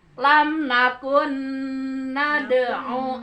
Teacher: Ya, 74 itu mulainya min dunillahi qalu dallu anna balam nakun. Nah, itu nun mati menghadapi nun. Nun mati menghadapi harus idgham. Jadi suara nun yang pertama masuk ke nun yang kedua. Jadi ditahan ya.